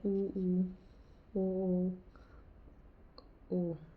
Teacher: जिन स्वरों को बोलते समय ओठों की आकृति वृत्त के समगोल बन जाती है, वर्ताकार स्वर कहलाते हैं, उ, ओ, ओ। यानी जो हमारे होठ है ना वर्ताकार हो जाते हैं।